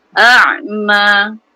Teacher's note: So ain bila mati tu ada sedikit aliran. Dia bainah ataupun tawasud kan, pertengahan. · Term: huruf ain